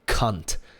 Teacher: But a lot of insults have a great mouthfeel, like cunt. It starts with a very explosive consonant, k, and it ends with one, t.